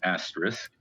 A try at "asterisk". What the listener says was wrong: Say that again. It's a T, not a K. Asterisk.